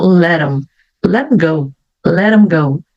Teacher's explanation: Mas, quando eu tenho esse pronome aqui, né, them, eu tenho uma palavra que vem antes, que começa com a letra T, eu também posso emendar e ficar let 'em. Tiro fora o som do TH e só vou falar M.